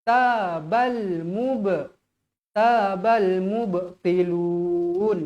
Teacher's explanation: Qalqalah sughra. Dibaca dengan keadaan melantun.